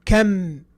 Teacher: I'm pushing the two lips together. That's what makes the Meem.